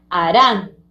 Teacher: Ran es la que tiene fuerza, A no tiene fuerza. A será la sílaba átona de harán. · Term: sílaba tónica